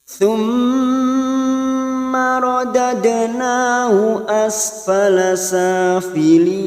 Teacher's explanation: Thumma mim yang bertasdid gunnah musaddada kita tekan selama 3 harokat dan kita dengungkan.